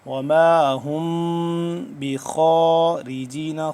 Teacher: ہا میم پیش، ہم میم ہے، اس پہ اوپر جزم ہے، میم ساکن ہے، اور اس کے بعد جب با آ گیا، با آ جائے تو ہم اس پہ اخفا لازمی کریں گے ، تو یہاں پہ اخفا ہو رہا ہے، وما ہم بخارجین،